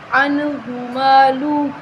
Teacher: ہا کے اوپر پیش ہے، حرکت ہے تو ہم حرکت کو لمبا نہیں کریں گے۔ عنہ مالہ، عنہ نہیں کریں گے بلکہ عنہ مالہ اس طرح پڑھیں گے۔